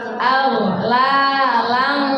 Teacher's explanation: Nah, di situ ada ghain bersukun. Dia cukup aja aghlala gitu, nggak usah tidak. Karena itu bukan qalqalah.